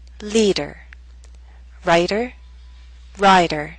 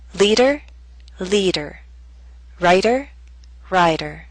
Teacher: The words on the left have a shorter vowel sound in the first syllable. The words on the right have a longer vowel sound before that voiced D.